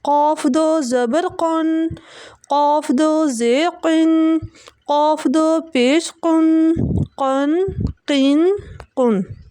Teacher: دو نقطے والا قاف آ رہا ہے، اس قاف کو ہم موٹا کر کے پڑھیں گے